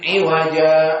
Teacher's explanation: Jadi dibacanya iwaja, maka ja 2 harakat itu dinamakan mad iwad.